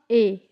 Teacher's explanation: कंठ तालव्य दीर्घ स्वर वर्ण का उदाहरण